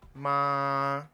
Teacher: 一声的▁Ma▁就是持续的最高音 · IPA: ma˥˥